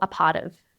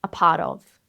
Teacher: The O in of can be either a schwa sound or a short O sound.